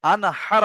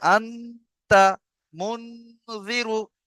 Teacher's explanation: গুন্না করে পড়তে হবে এককালি পরিমাণ নাকে তুলে